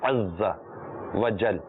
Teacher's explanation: زا پر بھی تشدید ہے، دو بار پڑھا جائے گا